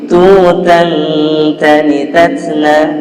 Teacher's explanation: Yang disamarkan adalah huruf nun sukunnya atau tanwinnya, fathatain, kasratain, dhammahtain. Dia menjadi apa? Menjadi samar. Jadi nggak dibaca an, tapi dibaca eng. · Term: ikhfa